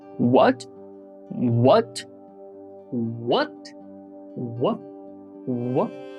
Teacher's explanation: the second tone means our tone starts from relatively low place and slowly rises